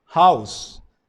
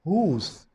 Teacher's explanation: the word house, as we pronounce it, has diphthong, but in Old English it was pronounced like whose, and it means it has long vowel. But now that long vowel is changed and now it is pronounced as house.